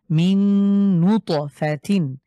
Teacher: হ্যাঁ, গুন্না আমরা স্বাভাবিকভাবে আমরা এই নুনটাকে বাদ দিব, দিয়ে পরের নুনে চলে যাব। তো এটাকে মিলিয়ে পড়া। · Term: ইদগামের গুন্না